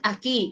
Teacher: ahí tienes pues solo el sonido de la I, la U no suena